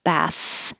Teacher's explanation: bath is a th so it's a little between your teeth and you only hear air flow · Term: voiceless th